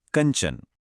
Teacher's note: कंचन में बिंदी की आवाज न्य की आधी ध्वनि है